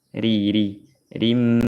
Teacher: Ra-nya harokat kasrah dibaca tarqiq tipis